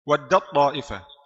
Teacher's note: huruf yang sukun yang pertama sudah hilang sifatnya hilang juga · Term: idgham kamil